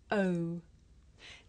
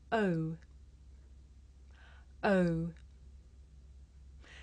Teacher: a diphthong a double vowel sound the shape the mouth makes changes from the beginning of the sound to the end it's pronounced oh did you notice how my mouth changed shape